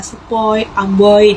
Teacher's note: yang kedua ada diftong naik menutup maju oi